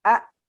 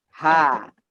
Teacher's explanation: Huruf hamzah pita suaranya tertutup.